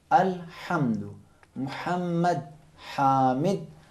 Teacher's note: ہا اور عین کے لیے حلق کے درمیانی حصے پہ ذرا زور لگانا ہے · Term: حرف ہا